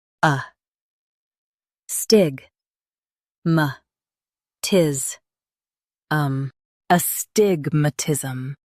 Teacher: Stress stig and keep matism light.